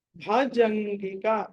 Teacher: భ అన్నది మహాప్రాణము, జ తర్వాత జం తర్వాత సున్నా ఉండి ఉంటుంది అనుస్వారము.